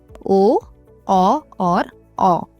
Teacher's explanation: कंठोष्ठ उसमें गले और होठ दोनों का प्रयोग होता है